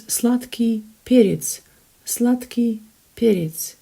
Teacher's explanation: So perets, the stress is on the first syllable, and sladky, you can see D in there, but it's pronounced as T, simply because K impacts the previous letter D